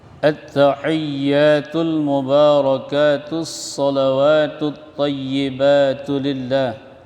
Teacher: Ha di tengah tenggorokan.